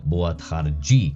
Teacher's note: And then the d, the d, goes to a j